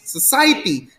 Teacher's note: society the stress is not on the first syllable